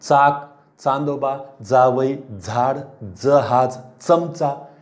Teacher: आता यांचं तुम्ही देखील वाचन केले तर लक्षात येईल की अरे तुम्ही दंत तालव्य म्हणजेच तुमचं दंत तालू ह्या भागाकडे जिभेचा शेंडा जातो, दाताच्या नंतरचा भाग, वरच्या दाताच्या नंतरचा भाग बघा.